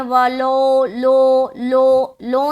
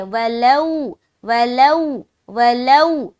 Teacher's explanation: اور معروف رکھنا ہے، مجہول نہیں کرنا۔ بعض اوقات لوگ پڑھتے ہیں وَلَو، لو، لو، لو نہیں پڑھنا، ٹھیک ہے؟